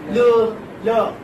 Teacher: So air is released through the sides of the tongue, while the tip of the tongue touches the central part of the alveolar ridge, or say the upper teeth. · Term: lateral